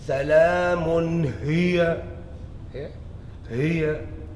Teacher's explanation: So what's the makhraj of the ha? Voice box. Where Adam's apple is. Okay. So even this ha is soft, but it's not as soft as breathing from the chest.